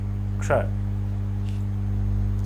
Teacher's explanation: वाला इससे बनता है क्ष अब इसका उच्चारण आप करके देखें आधा क बोले षटकोण मूर्धन्य स बोले